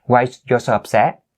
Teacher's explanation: But one thing here, in terms of, intonation, that you should raise your voice at the end in order to make it a question